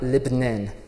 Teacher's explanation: C'est comme A, et en libanais, ça devient toujours E, ou parfois même E.